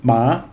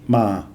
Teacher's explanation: the Thai word for horse is like ma with a higher tone, ma, and just with a mid-tone, ma, is come, like martini, come here.